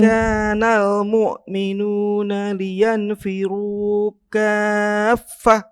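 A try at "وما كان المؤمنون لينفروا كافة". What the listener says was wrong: kurang panjang kan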